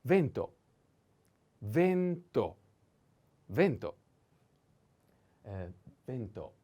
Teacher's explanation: Vento, the accent is on E, vento.